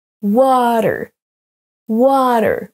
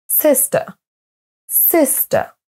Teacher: les mots à l'écran sont accentués sur la première syllabe.